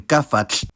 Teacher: the geminated /f/ stays voiceless, like in gaffall